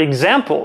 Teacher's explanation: that was the word [əgzæmpl], with some rock-solid [g] right in the middle